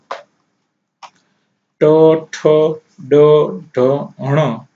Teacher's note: જેને મૂર્ધન્ય તરીકે ઓળખવામાં આવે છે બોલતા જીભ મૂર્ધનને સ્પર્શ કરે છે